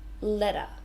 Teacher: in Australian English we say it more like a D sound